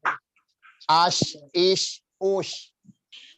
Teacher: Ya, itu huruf shin. Dan rokhawah bila dimatikan atau disukunkan, huruf shin itu mengalir, jadi nggak terhenti.